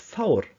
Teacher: the V could be pronounced voicelessly in front of a diphthong